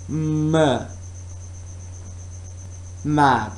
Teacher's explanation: When you are producing the sound M, you can feel that both lips are together and there is no air at all. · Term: bilabial sound